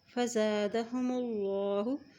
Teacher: اللہ کے نام سے پہلے اب پیش آ گیا ہے تو اللہ کا نام ہم موٹا ادا کریں گے